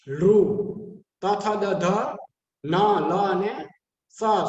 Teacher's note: પછી દંત્ય દાંત દ્વારા લૃ, ત, થ, દ, ધ, ન, લ અને સ, સસલાનો સ એનું સ્થાન છે. એ બોલાય ઉચ્ચારણમાં એ દાંત દ્વારા બોલાય છે.